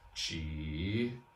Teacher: the ji, which you might notice is third tone. Ji, falling and rising.